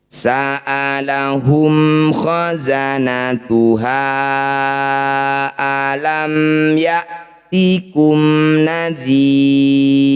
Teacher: Mim sukun ini harus dibaca jelas, jangan ada yang ditahan atau berdengung. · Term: idhar syafawi